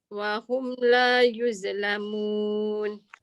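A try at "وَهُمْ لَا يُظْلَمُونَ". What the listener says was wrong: Wa hum la yuzlamun. Bila use ada dua kesalahan. Satu dia jadi huruf zai. Yang kedua dia ada bunyi z. Dha ni hujung lidah keluarkan dan dia tebal. Wa hum la yuz. Tapi pastikan hujung lidah tu keluar.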